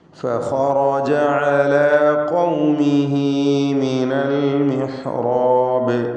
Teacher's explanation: على قومه എന്നതിലെ അന്ത്യത്തിലുള്ള ഹാഉ ദ്ദമീറിന് 2 ഹറക്കത്തിൻ്റെ അളവിലുള്ള ദീർഘം നൽകണം. മദ്ദുസ്സിലത്തി സൂറ എന്ന് ഇത് അറിയപ്പെടുന്നു.